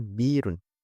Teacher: dalam dialek Quraisy, Hamzah sering diucapkan sebagai ee dengan digantikan oleh mad ya. Contohnya misalnya kalimat bi'run yang artinya sumur, mereka mengucapkan birun. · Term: tashhil